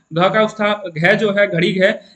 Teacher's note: घ का घ जो है घड़ी घ इसका उच्चारण स्थान होगा कंठ